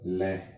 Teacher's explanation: इसका उच्चारण करते समय श्वास वायु जिह्वा के दाएं बाएं से, बगल से, इधर उधर से निकल जाती है और फिर जिह्वा नीचे आती है, तब इसका उच्चारण होता है। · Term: पार्श्विक वर्ण